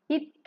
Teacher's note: இத் அப்படின்னு உச்சரிக்கும் போது நம்ம நாக்கு வந்து கொஞ்சம் வெளியில வரும்